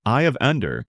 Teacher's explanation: with emphasis on the first word, Eye of Ender, making it sound strong and direct. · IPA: /aɪ əv ˈɛndər/